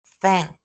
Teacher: here um the k is not aspirated. Right? It's at the end